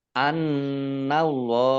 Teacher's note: nun tasdid dibaca gunnah atau mendengung ditahan 2 harokat